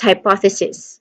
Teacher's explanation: The second syllable carries the primary stress. The O is a short O sound.